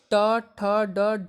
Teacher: स्थान के आधार पर बताइए कि मूर्धन्य, यानी कि आपका जीभ जब थोड़ा सा घूमता है तो उसको मूर्धन्य कहते हैं